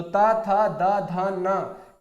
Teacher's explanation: दंत वाला कॉलम हमारा ता वर्ग होता है।